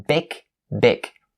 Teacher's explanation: make sure that you distinctively pronounce the g sound of the word big instead of like the k sound